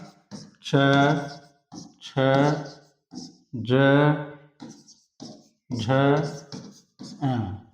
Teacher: च वर्ग तालु से होता है इनका उच्चारण।